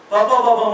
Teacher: ಎರಡು ತುಟಿಗಳು ಜಾಯಿಂಟ್ ಆಗಬೇಕು